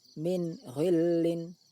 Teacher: Bunyi nun sukun dibaca jelas. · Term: izhar halki